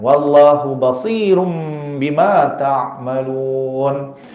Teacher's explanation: Tanwin tu adalah nun. Bila temu dengan huruf ba dia akan keluar huruf mim. · Dia kata wallahu basir tutup mulut betul. Dipanggil iqlab tukar tanwin pada mim. Tanwin tu adalah nun.